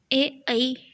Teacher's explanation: तो कंठ तालव्य से बोले जाते हैं ए ऐ।